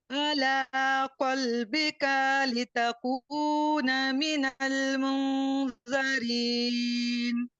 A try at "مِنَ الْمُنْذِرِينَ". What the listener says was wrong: मुज़री नहीं है, दाल के नीचे जेर है, जेर के साथ इसको पढ़िए। मिनल मुज़िरीन।